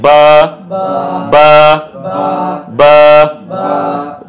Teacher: দুই ঠোঁট থেকে উচ্চারিত। বা এর মাখরাজ হলো কি দুই ঠোঁট থেকে উচ্চারিত হবে।